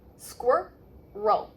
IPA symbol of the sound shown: əl